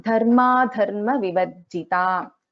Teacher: So dha again is a mahaprana in this verse.